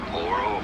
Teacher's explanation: you do want to stress on the middle syllable